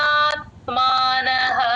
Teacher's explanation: ఉంది స్టార్టింగ్ లోనే స్టార్టింగ్ మహాప్రాణం ఉన్నప్పుడు వదిలేస్తూ ఉంటారమ్మా చాలామంది ఒకసారి గమనించుకోండి అందరూ ఛి చెప్పాలి గాలి బయటకి వదలాలి మహాప్రాణం అప్పుడే వినిపిస్తుంది.